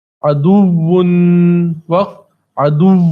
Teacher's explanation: واو کو کچھ سختی کے ساتھ پڑھا جاتا ہے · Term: واو تجدید والا